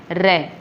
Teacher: इसमें देखो, जिस व्यंजन वर्ण का उच्चारण करते समय वायु जीभ के ऊपर से लुढ़कती हुई बाहर निकल जाती है उसे लुंठित व्यंजन कहा जाता है। चूँकि इस वर्ण का उच्चारण करते समय जीभ में कंपन भी होता है, अतः इसे प्रकंपित व्यंजन भी कहा जाता है।